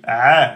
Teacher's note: c'est le a, milieu de la gorge, le a de Ali. A, et pas a, aminci.